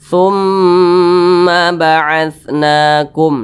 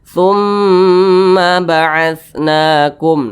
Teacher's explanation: maka huruf mim ini dibaca dengung. Dibaca dengung itu dibaca ditahan suaranya, dipanjangkan kira-kira 2 ketukan atau 2 harokat. Nah, boleh juga kalau untuk gunnah musyaddadah itu boleh juga 2 hingga 3 ketukan begitu.